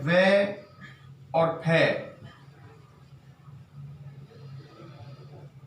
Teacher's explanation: अब है वे और फे, इनको हम दंतोष्ठ के नाम से जानते हैं, क्योंकि ये दांत और ओष्ठ के मिलाने पर बोले जाते हैं